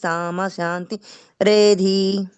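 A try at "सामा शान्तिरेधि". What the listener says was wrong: ఇక్కడ కొంచెం దీర్ఘం పెట్టండి, సామా శాంతిరేది.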